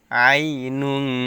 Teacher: তানবিনের পরে ইকফার হরফ জিম আসছে, এজন্য গুণার সহিত গোপন করে পড়তে হবে।